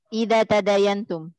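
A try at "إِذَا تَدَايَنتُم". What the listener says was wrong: Idza tadayantum ahsanti.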